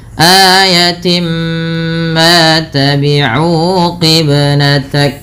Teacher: Kemudian pada lafal timma ini merupakan bacaan idgham bi gunnah sehingga bunyi awalnya tin bertemu dengan mim, suara tinnya masuk kepada huruf mim, maka dihukumi dengan bacaan idgham bi gunnah dengan menahan bunyi suara nya sepanjang 2 harakat.